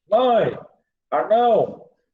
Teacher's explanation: Você pronuncia o ditongo e o som sai pelo nariz. Por isso que é ditongo nasal.